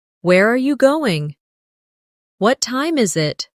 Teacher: for information questions, those starting with who, what, when, where, why, how. The tone often falls at the end. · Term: falling tone